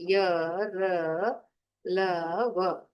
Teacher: इसके बाद है ईषत् स्पृष्टः, यानी हल्का स्पर्श होता है, जैसे य, र, ल, व। जिह्वा का स्पर्श तो है, लेकिन हल्का सा स्पर्श होकर हमारी जिह्वा वापिस मुख में आ रही है, इसलिए ये ईषत् स्पृष्टः की श्रेणी में आते हैं।